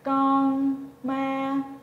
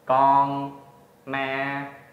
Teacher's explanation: Okay, so first, thanh ngang, we call it mid-level tone, which means when you speak, you start at the middle of your normal speaking voice and remain stable while you're speaking